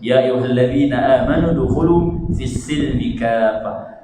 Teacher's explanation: Mad lazim kalimi muthaqqal. Berapa harakat tu? 6 harakat tuan-tuan.